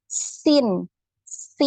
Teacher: jadi tajam ada bunyi seperti itu ya seperti menyerupai bunyi desis ular ya desis ular ya seper seperti itu ya ya Ee kemudian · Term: huruf Sin